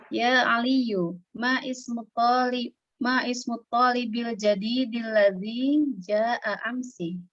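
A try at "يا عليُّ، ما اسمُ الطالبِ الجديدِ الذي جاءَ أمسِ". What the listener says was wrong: Itu kan kalau ma sama itu kan hamzahnya hamzah wasal kan. bukan ya Ali yu, setelah ya Ali itu masmu gitu.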